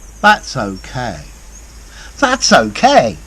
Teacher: my intonation is much less, my voice is much quieter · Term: less intonation